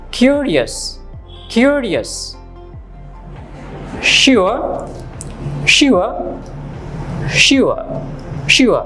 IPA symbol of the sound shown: ʊə